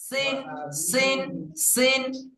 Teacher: সিনটা শিশির ও পাতলা আওয়াজে